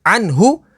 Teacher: نون ساکن کے بعد ہا ہے، ہا حروف حلقی میں سے تو یہاں پر اظہار ہوگا یعنی غنہ نہیں کریں گے